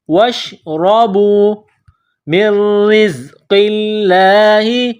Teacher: را کے اوپر زبر ہے تو را کو موٹا کرنا ہے